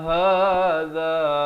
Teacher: ha di pangkal kerongkong